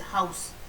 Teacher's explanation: तो जैसे HOUSE, हाउस, यहाँ पर हाउस में देखिए O और U के अलग अलग साउंड, दोनों को मिला करके एक साउंड आपका बन गया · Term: डिप्थोंग